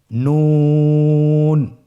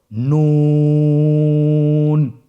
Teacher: নূর হরফটির উচ্চারণের স্থান হচ্ছে জিহ্বার আগা তার বরাবর উপরে তালুর সঙ্গে লাগিয়ে উচ্চারিত হয়।